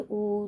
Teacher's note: आपके होठ जो है गोलाकार हो जाएंगे जब आप ऊ बोलोगे